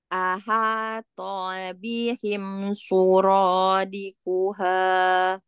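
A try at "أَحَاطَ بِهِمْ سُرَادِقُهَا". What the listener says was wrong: Umi, ahato. Biarkan melongo, jangan ditarik. Ahato, to. Nanti tidak bulat. Ya, ahato. Jangan panjang, pendek. Umi, to-nya jangan ditemenin sama angin. Jangan to, jangan. To. Aha, to bihim, to bi, to.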